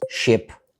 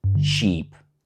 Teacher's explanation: Same kind of sound. The only difference is the length. Short, long, and that length is the whole word.